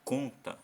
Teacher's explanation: Na verdade o mais forte, ou a sílaba tônica, é o com, tá vendo? Então conta, olha só, conta.